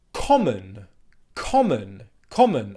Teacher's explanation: the schwa sound at the end of the word in common is a very common sound but because it's spelt with an O letter at the end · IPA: /ə/